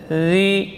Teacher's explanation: Zi mengalir suara tanpa mengalir udara.